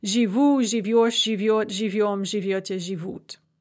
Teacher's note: You can also have end-stressed first conjugation verbs, like жить, where we add the endings and the stress suddenly shifts onto those endings.